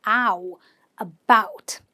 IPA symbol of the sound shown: aʊ